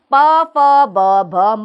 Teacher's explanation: ये ओष्ठ है इनका उच्चारण स्थान, अर्थात होठों का प्रयोग होता है इसमें। ये व्यंजन है प फ ब भ म और इसीलिए ये ओष्ठीय व्यंजन के नाम से जाने जाते हैं।